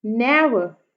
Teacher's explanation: ने पे जो है पहले वाला सिलेबल जो है वो स्ट्रेस आ रहा है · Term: ट्रॉकी मीटर